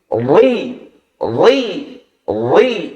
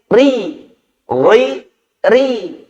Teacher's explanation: huruf ro dibaca talqiq atau tipis ketika huruf ro dalam keadaan berharokat kasrah